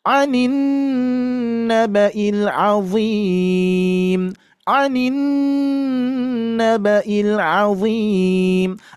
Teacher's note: Ada nun bertasydid, gunnah musyaddadah. Harus ditahan, jangan tergesa-gesa.